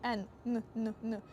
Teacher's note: язик майже торкається верхніх зубів тільки кінчиком